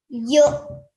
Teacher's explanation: you've joined the ya to the hamza sakin and you've pronounced it with a jerk sound